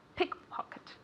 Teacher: Remember that the accent goes on the first word. Pickpocket, or on the first syllable.